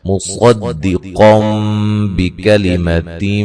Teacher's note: نون تنوین کا اقلاب ہے